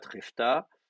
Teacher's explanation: le A prend l'accent, fait tomber la prétonique